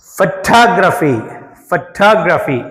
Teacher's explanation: ఇక్కడ ఫోటోగ్రాఫ్ ఫోక్ stress ఉంది. ఫోటోగ్రఫీలో టాగ్ దీనికి స్ట్రెస్ ఉంది